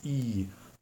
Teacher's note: it's the highest vowel sounds of all vowel sounds in the American English and you have to stretch your lips and it may make